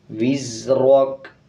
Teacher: را کے اوپر جب زبر آ جائے تو را کو پر پڑھتے ہیں، یعنی موٹا کر کے پڑھتے ہیں